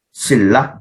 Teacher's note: 신라 뒤에 리을이 왔어요. 그러니까 앞에 오는 니은이 리을로 바뀌어서 신라 이렇게 발음이 된다라고 생각을 하시면 됩니다.